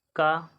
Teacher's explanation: अल्प्राण है और अघोष वर्ण है